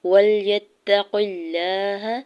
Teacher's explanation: وَلْيَتَّقُ اللَّهَ یا کے زبر کو تام شدت کے ساتھ ملاتے ہوئے پڑھنا ہے. قاف کی زیر کو لام جلالہ کے ساتھ ملاتے ہوئے لام جلالہ کے اوپر کھڑی زبر دو حرکت کھینچ کے ادا کریں گے